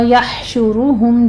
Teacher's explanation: یحشرہم میں ہا پر ہمس ہوگا، شین کے اوپر ضمہ ہے، ہونٹ گول کیجیے، را پر بھی ضمہ ہے، را مفخم پڑھی جائے گی